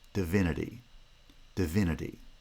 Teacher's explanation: The d of the first syllable is pronounced with schwa. The n of the third syllable is pronounced with schwa, divinity. Again, the final e is not reduced to schwa because of a word final lengthening effect, but we'll come back to that later in the course.